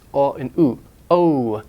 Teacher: we don't have a pure long o like in some languages its glided it's just like the AE it's glided it's a diphthong it's